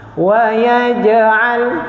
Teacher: jim sifat dia tidak ada angin dia sifat jahar. Jadi kita pi keluar angin salah. · Saya letak saja saya punya lidah di langit-langit tu dan saya lontarkan dia punya qalqalah.